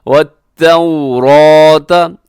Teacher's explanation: اس میں را موٹا ہے کیونکہ را کے اوپر حرکت ہے، تو پہ ہونٹ گول کیجیے گا، واو لین ہے